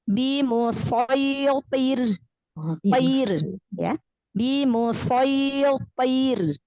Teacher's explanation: Nah, maka di akhir ayat ya, ro sukun karena waqaf atau ro sukun karena berhenti, sebelumnya huruf yang berharokat kasroh, ro-nya di sini kasroh, maka dibaca tipis, dibaca tarqiq.